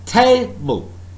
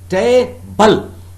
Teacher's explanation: the word table, alright, the first syllable is stressed